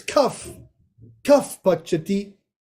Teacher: This is Upadmaniya here. Upadmaniya is when you replace it with the F sound.